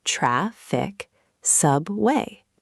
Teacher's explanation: Put the strong energy, stress, on the first syllable.